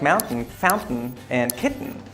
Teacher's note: And we also have the glottalized T, which is like mountain, fountain, and kitten.